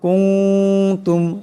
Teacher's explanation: এখানে নুন সাকিনের পরে তা আসছে, তাই ইকফার হরফ, গতিকে এখানে ইকফার একালিক পরিমাণ গুণনা হবে